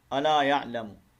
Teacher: الا الف مدہ ایک لمبا کریں گے ایک الف کے مطابق